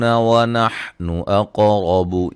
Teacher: قاف کو موٹا ادا کریں گے، قلقلہ بھی ہے، ہلا کے پڑھیں گے قاف کو